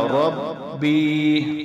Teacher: ایک الف کی مقدار کھینچ کر لمبا کر کے پڑھنا ہوتا ہے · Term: یا مدہ